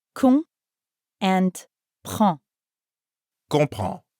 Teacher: And comprend has two nasal sounds, con and prend.